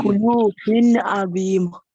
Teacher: you have to pronounce the ayn clearly away from the gunna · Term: Izhaar